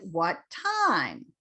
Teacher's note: even though that's a question time is a noun and i'm asking what time so that's the glide down